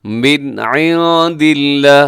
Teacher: عند اللہ یہاں نون ساکن کی بعد دال ہے، یہاں اخفا کیجیے گا